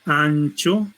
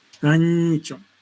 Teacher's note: Cuando decimos una palabra como gancho, ancho, en ningún momento, por ejemplo, el ápice de la lengua entra en contacto con los alveolos. Más al contrario, vemos que el sonido se realiza como palatal.